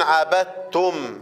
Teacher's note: وما دام سكنت الميم هيبقى فيها صفة التوسط